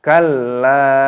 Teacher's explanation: Lam alifnya panjang dan disukunkan di sini, ditahan, ditekan.